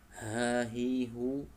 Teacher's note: huruf H dari tenggorokan paling bawah